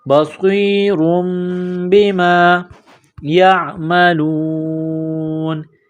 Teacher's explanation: تنوین کے بعد با ہے تو یہاں پر اقلاب کریں گے، آواز ناک میں چھپائیں گے